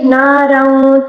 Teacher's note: را کو پر پڑھیں گے کیونکہ را کے اوپر 2 زبر ہے، ٹھیک ہے. ناروں غا کو پر پڑھیں گے اور وقف میں کھڑا زبر میں کوئی تبدیلی نہیں آئے گی، ٹھیک ہے.